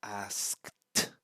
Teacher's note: the last consonant here we pronounce and it should result in no vibration in your throat